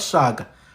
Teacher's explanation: In IsiXhosa, it is Chaka. But in IsiZulu, In IsiZulu, they pronounce the sibilant sh, not the ch.